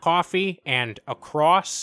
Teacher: Round O sounds turn into ua